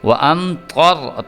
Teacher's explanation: میم ساکن کے بعد طا ہے اس لیے یہاں پہ ہم نے غنہ نہیں کرنا، طا کو پر کر کے موٹا کر کے پڑھنا ہے۔ وَأَمْطَرْ، طا کو بھی اور را جو ہے اس کو بھی، کیونکہ را ساکن جو ہے اس سے پچھلا حرف جو ہے اس کے اوپر اگر زبر ہو اور پیش ہو تو ہم نے اس کو پر کر کے پڑھنا ہوتا ہے۔